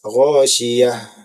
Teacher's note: ha juga merupakan huruf yang hamsu, yaitu mengalir nafas